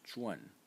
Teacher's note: the second pronunciation for this character is zhuan. In the fourth tone